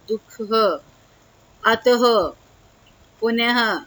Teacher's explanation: विसर्ग में हमारी ह का साउंड आती है